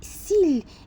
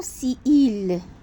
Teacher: c'est la suppression d'une voyelle finale devant un autre mot à initial vocalique par exemple on dit s'il et non si il on dit